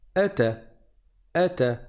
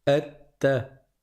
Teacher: Parce qu'il y a une shadda, alors on reste deux fois plus longtemps sur la consonne avant de passer à la voyelle qui est la fatha.